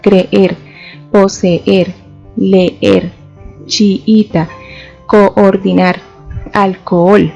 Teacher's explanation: debemos separar estas vocales porque están formando un hiato y están emitiendo golpes de voz por separado · Y también tenemos otro de los casos en los que podemos identificar que existe hiato y es cuando encontramos dos vocales iguales que requieren doble pronunciación. En este caso, las combinaciones que encontramos son AA, EE, II, OO, UU.